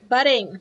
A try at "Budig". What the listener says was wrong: Buddin. It's Budig. There's no N.